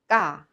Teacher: Ga is not aspirated but has much tension